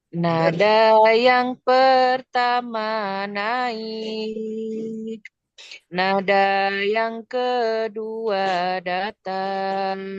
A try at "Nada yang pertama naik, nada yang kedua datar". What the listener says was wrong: Nah, yang datarnya belum. Nada yang kedua datang. Tangganya diturunkan lagi, yuk.